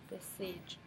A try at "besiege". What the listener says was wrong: Besiege, perfect.